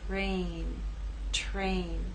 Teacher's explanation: And in this last word, T is voiceless. R begins voiceless and takes on a voiced sound as we move into A